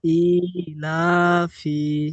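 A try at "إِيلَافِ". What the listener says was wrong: মাশাআল্লাহ, খুব সুন্দর।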